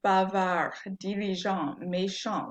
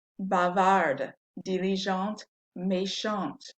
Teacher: Without the E, these endings are all silent. With the E, we now pronounce the N because that consonant there, the D or the T, it's not the last letter anymore.